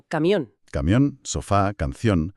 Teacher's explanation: La fuerza recae en la última sílaba y llevan esa tilde visual de alarma solo si se atreven a terminar en vocal n o s. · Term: agudas